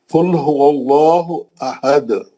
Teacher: اگر آپ روک دیے تو تنوین ختم ہو جاتی، انہیں دال کو ساکن کر دیا، تنوین ختم، وہ نون ساکن ختم